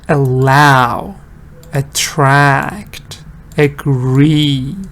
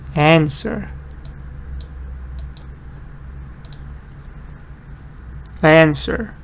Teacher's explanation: Because allow stresses on the second part.